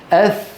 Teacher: الثاء من راس من طرف اللسان مع اطراف الثانيه العليا